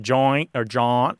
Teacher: it becomes corrupted through the lenition of the final sound